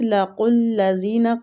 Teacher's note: قاف مستعلیہ حروف ہے، پور پڑھیں گے